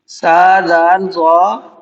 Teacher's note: سا زال ضا زبان کی نوک ثنایا علیہ کے کنارے سے مل کر ادا ہوتے ہیں